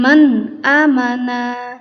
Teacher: tingkat yang terendah artinya tidak ada demi nya sama sekali ya cukup ditahan sebanyak satu harokat atau membaca seperti biasa saja membaca dengan jelas tidak perlu didengungkan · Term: izhar